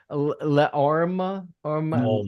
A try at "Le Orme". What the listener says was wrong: I say Leorme because in Spanish you say the E. I think it's Leorme, but I think each one's a syllable.